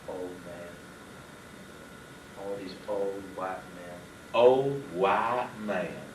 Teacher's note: the deep, deep South, where every vowel becomes a diphthong